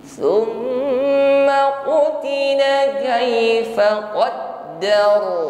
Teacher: Mim tasydid hukumnya sama sebagaimana nun yang bertasydid, ghunnah musyaddadah. Terasa dengung yang nyaman di al-khayshum, rongga hidung.